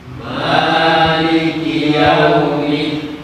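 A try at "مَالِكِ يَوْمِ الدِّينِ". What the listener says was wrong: Ya, untuk ma panjang 2 harokat ya. 1 harokat a, kalau 2 a, 1 a, 1 ketukan a, kalau 2 a, jadi cukup di ayun. Maliki, maliki, jangan terlalu panjang, bukan maliki tapi maliki.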